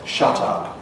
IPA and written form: ʃʌt ʌp (shut up)